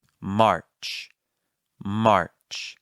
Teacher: make sure that the r is present but not the dominant sound